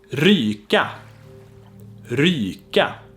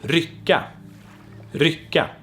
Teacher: you can also hear in the second one that the consonant in the middle is a long consonant